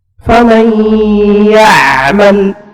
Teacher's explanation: kalau hidung ditutup, faman, nggak bisa, dan nggak akan keluar gunnahnya.